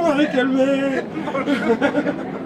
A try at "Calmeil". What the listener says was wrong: Calmeil. Il y a un Y à la fin. Non, EIL.